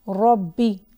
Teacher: सल्ला या रब्बी, रब्बी। तो रब एक दफ़ा बा सुकून के साथ है, एक दफ़ा कसरा के साथ है। रब्बी यानी हमने बा को 2 मरतबा पढ़ा। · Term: शद्दा